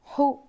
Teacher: حلق کے بیچ کے حصے سے ہا ادا ہوتا ہے. یہ حروف حلقی میں سے ایک حرف ہے.